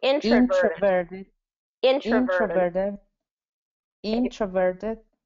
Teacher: So introverted. So it's going to be first syllable stress. So you want to make sure in is the one that's stressed.